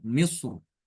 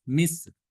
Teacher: Misr ini boleh dibaca dengan tebal misr atau dibaca tipis mis. Namun di sini yang lebih banyak diperhatikan adalah dibaca tebal ya.